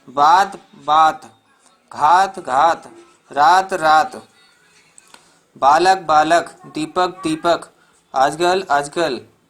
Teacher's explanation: हिंदी के उच्चारण में अंतिम अ रहते हुए भी उच्चारित नहीं होता है